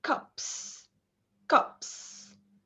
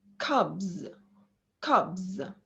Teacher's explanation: the vowel sound is a bit shorter before the voiceless consonant · And in the second word, cubs, here we have the vowel a bit longer before the voiced consonant. Another thing that I need you to know is that the s after the p, which is voiceless, is still voiceless.